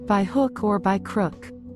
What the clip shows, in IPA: baɪ hʊk ɔr baɪ krʊk